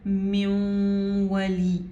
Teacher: یہاں پہ بھی نون جو ہے واو کے اندر مرج ہوا ہے لیکن نون نے اپنی صفت غنہ نہیں چھوڑی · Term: ناقص ادغام